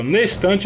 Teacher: tem gente que pronuncia como uma palavra só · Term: Elisão